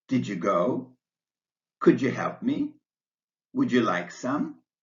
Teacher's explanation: the second D in did and the Y in you combine to make the paddle palatal sound jae-in did you go and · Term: palatalization